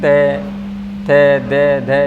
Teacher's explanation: रे से दंत का उच्चारण स्थान, दंत से हमारा ते वर्ग बोला जाता है, ते थे दे धे, यानी दांतों का प्रयोग होता है इसमें